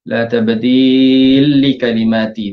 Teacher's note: ada hukum idgham kabir lam bertemu dengan lam